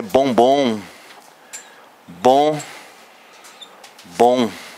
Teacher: São os dois sons nasalados aí, né?